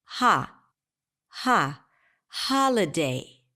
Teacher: in the word holiday the primary stress falls on the first syllable